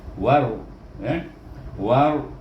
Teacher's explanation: Kena baca dengan idgham syamsi, masukkan dengan waw ni dengan huruf ra